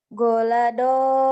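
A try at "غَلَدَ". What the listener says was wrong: Gak ada yang panjang.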